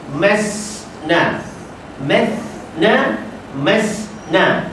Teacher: Bila masna, ujung lidah tak kena ujung gigi kapak, dia pergi ke langit-langit keras. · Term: Sa jadi sin